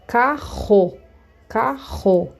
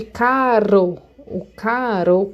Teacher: quando eu tenho os dois erres juntos aí ele fica com som mais arrastado vocês vão notar que ao invés do som sair da ponta da língua o som vai sair lá do fundo da garganta carro carro diferente de caro o caro quando eu falo caro